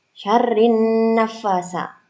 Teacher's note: Nah, alnya tidak terbaca karena bacaan asyamsiyah.